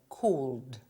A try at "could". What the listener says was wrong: because the word is spelled with an L, but we don't pronounce it.